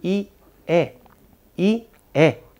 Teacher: при гласна И челюстният ъгъл, разстоянието между горните и долните резци, е по-тесен, отколкото при гласна Е.